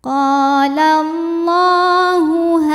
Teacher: Qala Allah, hukum tajwidnya adalah mad tabi'i muqaddar, sebab lam berharokat fathah panjang. Cara membacanya, lam dipanjangkan 2 harokat saja.